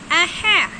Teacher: ہا کو حلق کے بیچ سے ادا کریں گے